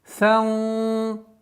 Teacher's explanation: С огласовки фатха уходим на сокрытие, правило сокрытия ихфа. Ихфа здесь твердое, так как та твердое.